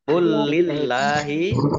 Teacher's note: Qulillahi, lamnya ada tasdidnya, dibaca double. Allahnya dibaca tipis karena harokat di depannya kasroh